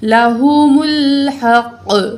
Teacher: अगर ठहरना पड़ जाए किसी को तो किस तरह ठहरेंगे, क़ाफ़ के ऊपर पेश है ये ड्रॉप हो जाएगा, क़ाफ़ के ऊपर पेश है ड्रॉप हो जाएगा, काफ़ साकिन पढ़ा जाएगा। तो क़ाफ़ में जब का साकिन होता है तो वो कलकला हो जाता है उसमें, ठीक है। तो डबल आवाज़ आएगी यहाँ पे भी, लहुमुल हक़।